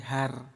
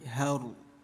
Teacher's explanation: Jangan terlalu jelas menjadi har tapi haru namanya ro tafkhim.